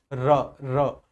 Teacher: रा का उच्चारण करके देखो, महसूस होगा कि जिह्वा में कंपन हो रहा है। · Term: प्रकंपी